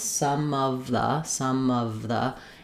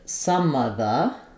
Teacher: We can say all of the sounds, some of the, and there you really have to move from the v movement to the of the. But because of the is a difficult combination and those words are not that important in the phrase, we sometimes lose the v sound of. So then we end up with some of the, where we have all schwas through here.